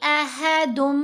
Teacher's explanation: تو اب ہم نے احدن نہیں پڑھنا، دال کو جب میم سے ملائیں گے آواز بن جائے گی احدم، ساتھ غنہ بھی کرنا ہے